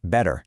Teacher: in the word better, that second syllable completely relaxes into a schwa